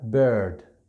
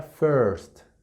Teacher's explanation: esta es como si fuera con mis labios a pronunciar una o